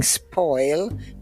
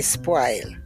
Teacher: we do not use the rounded vowels in Jamaica they're all broad a vowels we instead of saying spoil we say spoil yeah but they're